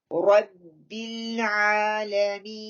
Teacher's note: Rabbil ba kasra clear and lam, don't let go, the lam is no kalkala, we need to hold the lam